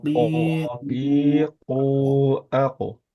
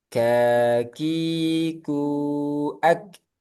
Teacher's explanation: Kalau kof tidak ada aliran udara. Kalau kaf ada aliran udara.